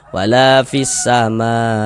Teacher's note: Jadi mad tabi'i yang bertemu dengan huruf hamzah ya, dalam satu kata ya, atau dalam satu kalimat, maka berubah nama, berubah bentuk menjadi mad wajib, mad wajib muttasil. Panjangnya itu 4 sampai dengan 5 harokat. Akan tetapi mad wajib yang disukunkan itu boleh dibaca sampai dengan 6 harokat.